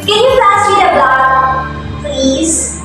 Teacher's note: you have to add the word please in a lower tone so you don't sound rude or arrogant